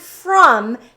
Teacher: the only part in the word from that is irregular is that o because it has the uh sound which is the schwa